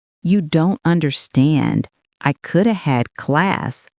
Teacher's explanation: Coulda replaces could have in casual speech. Notice how words flow and contract, shadow without adding the full have.